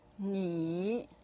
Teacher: the tone goes down, then up.